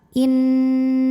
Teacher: Lam pada lafaz Allah atau lam jalalah dibunyikan secara tafkhim. Sebab baris huruf sebelumnya fathah maka bacanya tebal.